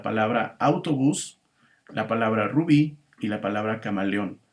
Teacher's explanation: todas estas son palabras agudas porque su última sílaba es la sílaba tónica